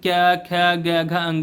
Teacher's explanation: कंठ में कै वर्ग का होता है